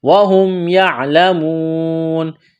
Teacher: میم واو پیش مو واو مدہ ہے، ایک الف کے برابر کھینچنا ہے، نون زبر نا، یعلمون، یہاں جب اس آیت پر وقف کریں گے تو نون کو ساکن کریں گے۔